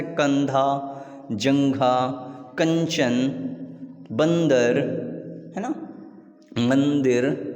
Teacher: अनुस्वार का उच्चारण करते समय वायु केवल नासिका, नाक से बाहर आती है